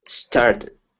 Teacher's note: the T sounding like a D happens very often in American English · this is an American English thing, but the second T is really going to sound like a D.